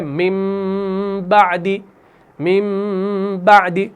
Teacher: इकलाब जो है वो हो गया नून साकिन तनवीन को मीम से तब्दील करना। · बा आ गया तो हम एक छोटा सा मीम ऊपर लगा देते हैं, यानी हम क्या करते हैं? हम मीम में इसको तब्दील करते हैं, नून साकिन तनवीन को मीम में तब्दील करते हैं, तो ये बनता है मिन बादी, मिन बादी।